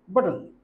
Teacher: খুব দ্রুত উচ্চারণ করতে হবে, কারণ এখানে ই যে ভাওয়ালটি আছে এটার উচ্চারণ হবে না, অর্থাৎ এল দিয়েই আমাকে সিলেবল তৈরি করতে হবে। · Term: সিলেবিক কনসোনেন্ট